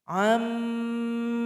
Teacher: nun sukun sudah tergabung kepada huruf mim dan tidak terasa bunyinya lagi. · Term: idgham bi gunnah